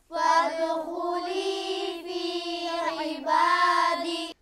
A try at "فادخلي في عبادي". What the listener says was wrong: دال پر قلقلہ ہوگا. فادخلي في عبادي. عين حلق صدا ہوگا. فادخلي في عبادي